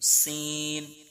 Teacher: सीन इसमें भी सीटी की आवाज निकलती है